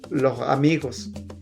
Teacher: que es la aspiración de la S